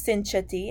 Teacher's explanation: cha is a palatal and Nia is also a palatal